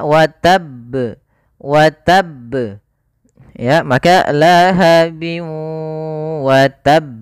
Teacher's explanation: karena di sini ba-nya itu berharakat tasydid, maka kita tekan dulu huruf ba-nya baru dimatikan di huruf ba-nya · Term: qalqalah